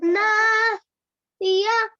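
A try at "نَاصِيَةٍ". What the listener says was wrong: ناصیتن، یہاں پہ غنہ کریے، ناصیتن۔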